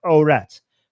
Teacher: Iranians pronounce it with a T sound, so it's aurat.